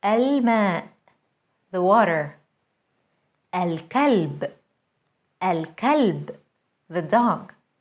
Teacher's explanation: notice how moon letters allow the l to be pronounced fully